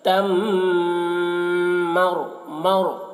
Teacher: میم مشدد ہے تو میم میں غنہ کر رہے ہیں